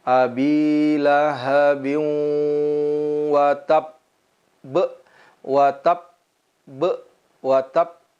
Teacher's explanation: ada qalqalah yang dinamakan qolqolah kubro tidak langsung kita pantulkan tapi kita tahan